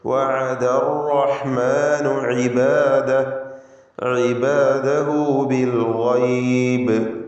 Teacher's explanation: അർ എന്ന് വിറപ്പിക്കരുത്, ഒറ്റ തഫ്ഖീം ചെയ്തുകൊണ്ടുള്ള ഒറ്റ റാ.